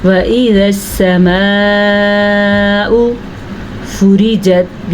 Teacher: یہ را ہر حال میں باریک پڑھی جائے گی کیونکہ را کے نیچے زیر ہے · یہ جو مد آپ کو نظر آ رہی ہے یہ 5 سے 6 حرکات عربیہ کے برابر ہے. اس کو 6 سیکنڈ تک کھینچ کے پڑھنا ہے، یعنی 6 سیکنڈ تک اس کو لمبا کرنا ہے. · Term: را باریک